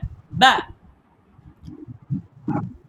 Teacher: অর্থাৎ বায়ের মাখরাজ হচ্ছে দুই ঠোঁটের ভিজা অংশ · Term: বা হরফ